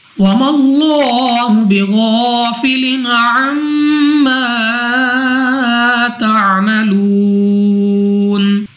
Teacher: गैन मुस्ताली में से हम मोटा पढ़ेंगे